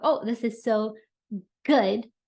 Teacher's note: notice the way that I emphasize the G I held it out